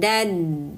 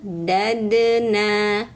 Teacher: Nah ini dalnya sukun qolqalahkan. Ujung lidah menempel ke pangkal gigi seri atas.